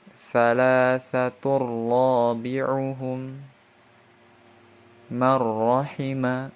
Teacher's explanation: Contoh dari idgham bila gunnah yaitu salasatur rabi'uhum marrahima ya. Jadi tidak didengungkan salasatur rabi'uhum, tapi langsung satu harokat saja.